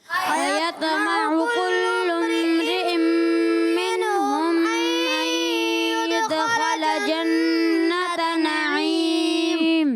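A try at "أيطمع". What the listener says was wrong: मगर अयत्मउ में तो को आपने पुर भी रखना है, कलकला भी। अयत्मउ,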